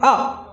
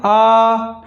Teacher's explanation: और वहीं बोलते हैं आ, थोड़ा ज़्यादा हमको जोर लग रहा है, ज़्यादा समय लग रहा है, उसमें दुगना समय लग रहा है।